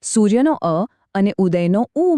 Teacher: સૂર્યનો અ અને ઉદયનો ઉ મળ્યા અને બની ગયો ઓ એટલે બન્યો શબ્દ સૂર્યોદય સારો સ્વર વિશે તો વાત થઈ પણ